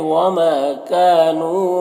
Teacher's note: ما میں الف مدہ ہے، کاف میں الف مدہ ہے، نون میں واو مدہ ہے، یہ تینوں کو 1 الف کے برابر کھینچیں گے. یہاں پر وقف کی صورت میں مد عارض وقفی ہوگا تو اس طرح سے پڑھیں گے.